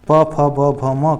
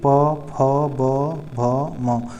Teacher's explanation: प फ ब भ म का उच्चारण ओठों से होता है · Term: प वर्ग